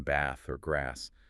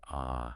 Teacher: the British broad a in bath or grass sounding like ah